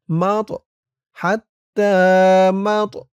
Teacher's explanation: তটা কলকলার হরফ ধাক্কা দিতে হবে